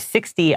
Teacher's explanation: s iix t y but anywhere that's like like that number it has a t but we usually pronounce it more like a d